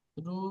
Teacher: ওয়াও সাকিনের ডান দিকে পেশ আছে, একে ওয়াও মাদ্দা বলে। ওয়াও মাদ্দাকে সর্বদা এক আলিফ পরিমাণ টান দিয়ে পড়তে হয়।